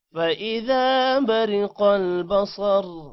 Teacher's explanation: برقل ری کو لمبا نہیں کرنا موٹا بھی نہیں کرنا کیونکہ را کے نیچے زیر ہے